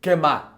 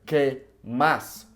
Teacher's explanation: that S sound just being completely omitted